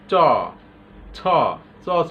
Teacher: চ ছ জিহ্বার সামনে আটকে যায়।